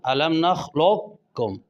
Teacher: قوف اور کاف دونوں قریب المخرج ہیں، پہلا ساکن ہے دوسرا متحرک ہے، قوف کاف میں داخل ہو رہا ہے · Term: ادغام متقاربین تام